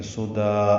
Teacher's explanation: 2 زبریں الف مدہ میں تبدیل ہو جائیں گی، 1 زبر اور 1 الف پڑھیں گے ، مد عوض کہتے ہیں اس کو، 2 زبر کے عوض